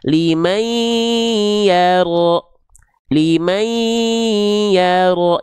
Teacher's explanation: Liman yaro, karena di sini ada idgham bigunnah, kita idghamkan bunyi annya ke bunyi ai